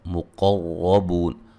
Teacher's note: قاف کو موٹا، را کو موٹا ، بوا مدہ ہے، وقفاً لمبی مد کے ساتھ پڑھ سکتے